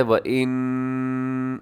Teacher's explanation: آواز کو ناک میں لے جائے گا، تھوڑا لمبا کرنا ہے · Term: نون مشدد